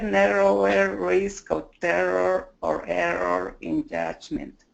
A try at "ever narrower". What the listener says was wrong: A little caught on the R with ever, but it was really good.